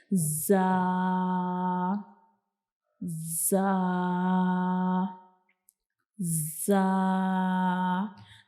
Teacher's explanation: ہماری زبان کی جو نوک ہوتی ہے یہ ہمارے جو اوپر والے اور نیچے والے دانت ہوتے ہیں ان کی اندر والی سائڈ پہ جا کے تھوڑا سا ٹچ کرتی ہے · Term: زا کا مخرج